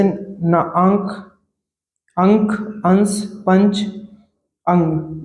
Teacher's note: अनुस्वार में नाक से अधिक सांस निकलती है और मुख से कम